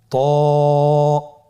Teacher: ত এর মাখরাজ কোন জায়গা থেকে আপনারা স্ক্রিনে দেখতে পাচ্ছেন। জিহ্বার আগা, সামনের উপরের 2 দাঁতের গোড়ার সঙ্গে লাগিয়ে উচ্চারিত হয়।